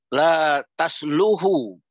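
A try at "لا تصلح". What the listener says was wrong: Ya, bagus. Gitu.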